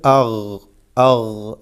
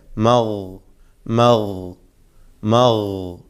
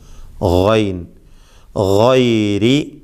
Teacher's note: തഫ്ഖീമോടുകൂടി പെരുപ്പിച്ച് കനപ്പിച്ചു കൊണ്ട് ഉച്ചരിക്കുക, തടിപ്പിച്ചു കൊണ്ട് ഉച്ചരിക്കുക.